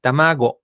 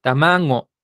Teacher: esta locutora utiliza la pronunciación de la gente grande, que esta G la pronuncia nasal, entonces no dice tamago, ajá, dice tamango, ajá, con una G nasal.